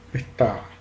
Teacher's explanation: Me faltó la fricativa glotal áfona o aspirada, que es muy característica de varios dialectos del español.